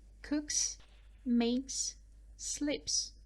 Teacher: after voiceless consonants we read S as a s sound